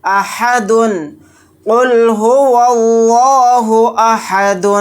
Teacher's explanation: آیت کرنے کی صورت میں دال کو ساکن بنا کر پڑھیں گے، اور دال ساکن ہوگا تو یہاں پر قلقلہ بھی کریں گے